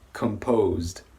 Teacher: the last part of the word is a D so we're gonna have a voiced sound